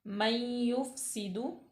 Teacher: नून साकन माबाद या हरूफ इदगाम यरमलून में से है तो यहाँ पे गुन्ना पैदा होगा